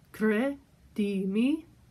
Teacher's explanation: The R there needs to be flipped or rolled.